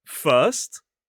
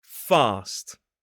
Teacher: Notice the tip of the tongue for the /ɜː/ sound in first is more in the centre of the mouth, whereas the /ɑː/ sound is towards the bottom and back of the mouth.